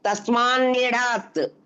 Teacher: తకారం కాస్త ఆ వర్గీయ అనునాసిక అయిన నకారంగా మారింది